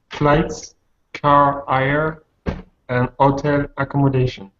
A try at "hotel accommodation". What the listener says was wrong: By the way, in English, it's the second syllable on hotel. Hotel. In French, you'd say hotel, but in English, you say hotel on the second syllable.